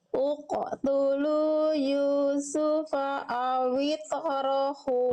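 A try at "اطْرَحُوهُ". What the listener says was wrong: Tebalkan. Awito. Angkat pangkal lidahnya. Ya, to itu huruf betul udah kolkolah, tapi kolkolahnya harus tebal. Jangan awite, tapi awito.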